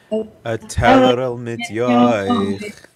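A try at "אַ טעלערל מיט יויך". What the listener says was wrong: Yeah, good.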